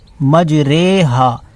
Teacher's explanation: امالہ کا مطلب یہ ہوتا ہے کہ را کھڑا زیر ری ہے، یہ تو امالہ مائل کر کے پڑھنے کو کہتے ہیں، تو مجری ہا نہیں پڑھیں گے بلکہ مجرے ہا پڑھیں گے۔ قرآن میں صرف ایک ہی جگہ یہ حکم آیا ہے کہ ری کو رے پڑھیں گے